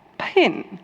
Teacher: if the consonant is alone, so the P is alone, we add the aspiration